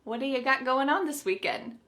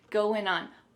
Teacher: we're gonna drop that g at the end of the word going.